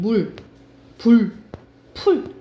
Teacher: 예전에는 으로 발음했는데 우로 많이 발음한 게 이제 원순 모음화라고 생각을 하시면 됩니다